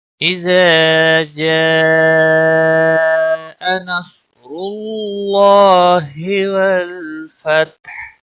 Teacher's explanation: اذا الف مدہ ہے، 1 الف کے برابر کھینچ کر پڑھیں گے۔ جاء مد متصل ہے، 5 سیکنڈ 5 الف کے برابر اس کو کھینچ کر پڑھنا ہے۔